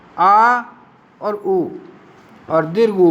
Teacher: पश्च स्वर जिसमें जीवा के पिछले भाग का प्रयोग होता है वो पश्च स्वर है